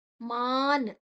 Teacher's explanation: ಮಾ ಆದ ನಂತರ ಅನುಸ್ವರದ ಉಚ್ಚಾರಣೆ ನ, ಮುಂದಿನ ಅಕ್ಷರ ನ ಇದೆ.